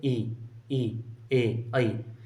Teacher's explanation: जब बोलते हैं ई, ई, ए, आई, जैसे जिह्वा के अगले बिंदु का जो है ना, यानी कि जो टॉप पॉइंट है उसका प्रयोग होता है, इनका उच्चारण करते हैं तब।